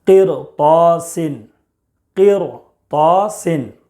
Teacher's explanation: را ساکن سے پہلے زیر ہے پھر بھی پر پڑھیں گے